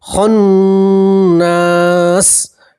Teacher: وقف کریں گے تو زیر کو ہٹا دیں گے اور سین کے اوپر جزم پڑھیں گے